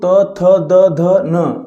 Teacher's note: त थ द ध न बोलेंगे तो आपका जीह आपके दांतों पर टकराएगा। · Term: दंत व्यंजन